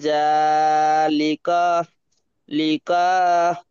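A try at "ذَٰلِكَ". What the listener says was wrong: তার টান নেই, টান নেই।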